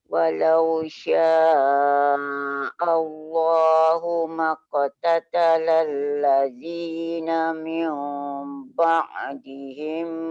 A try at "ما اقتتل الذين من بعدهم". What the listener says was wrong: Jangan terlalu renggang sangat. Maqtatalal ladzina mim. Jangan renggang sangat. Bila bunyi meong tu macam terbuka kan. Kenakan aja bibir atas bibir bawah, cuma dia tidak terlalu kuat. Mim ba. Jangan meong.